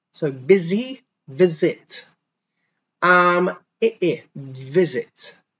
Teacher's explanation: the S is pronounced like a Z, just like busy.